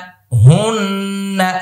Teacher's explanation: হানুন পেশ হুন, নুন জবর না, হুন্না, হুন্না এটা ওয়াজিব গুন্না।